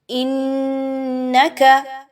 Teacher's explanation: نون پر تشدید ہے اور زبر ہے، حمزہ اور نون کو ملاتے ہوئے نون مشدد کا غنہ ناک میں کریں گے